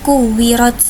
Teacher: rnya yaitu ro tafhim karena berharakat fathah maka dibaca dengan tebal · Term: rok tafkhim